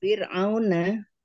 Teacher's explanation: Fir'auna ini dibaca tipis fir karena didahului dengan kasrah.